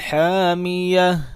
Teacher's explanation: اب یہاں پہ اگر وقف کریں گے تو پھر کیسے پڑھیں گے؟ تا کو ہا میں چینج کر دیں گے اور اس کو ساکن کر دیں گے